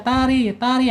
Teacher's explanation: Tari tari hanya getaran yang berkurang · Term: tipis